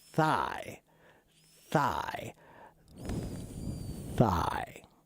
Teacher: It's an unvoiced TH where you just blow air. That's all you're doing is blowing air between your teeth with your tongue stuck between your teeth just a little bit.